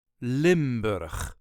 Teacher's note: There is a very slight emphasis on the first syllable